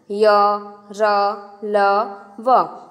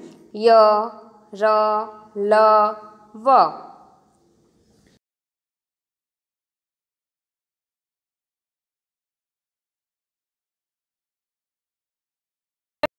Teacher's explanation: अंतस्थ व्यंजन इन वर्णों का उच्चारण करते समय जिह्वा मुख के किसी भी भाग को स्पर्श करती नहीं है। इनका उच्चारण स्वर तथा व्यंजन का मध्यवर्ती सा होता है।